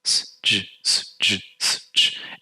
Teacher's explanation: you can shift from the alveolar s to the postalveolar j, s, j, s, j, s, j, and you can feel your tongue shifting back and forth.